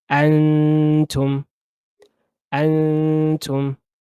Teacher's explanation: What the green color is telling you is a special rule where you are gonna hold the noon sound for two counts